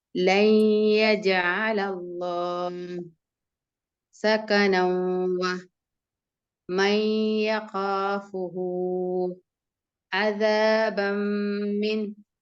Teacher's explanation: Read with nasal sound with 2 seconds. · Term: idgham bigunna